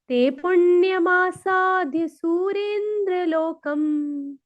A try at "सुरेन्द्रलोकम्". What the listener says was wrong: सुरेंद्र में सुर है ना, सुर यहाँ पे छोटा है, यहाँ पे बड़ा, यहाँ रे में दीर्घ करना है माता जी। सुरेंद्र लोकम।